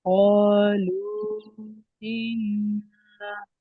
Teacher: হরফে মাদ্দার পরের দ্বিতীয় শব্দের প্রথমে হামজা এসেছে, তাই এটার মধ্যে মুনফাসিল, তাই 2 থেকে 3 আলিফ পরিমাণ টান দিয়ে পড়তে হবে।